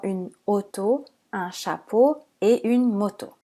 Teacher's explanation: Il peut s'écrire AU ou EAU et évidemment O, comme nous l'avons vu dans la partie sur les voyelles. AU et EAU sont des sons O fermés, comme dans une auto, un chapeau et une moto.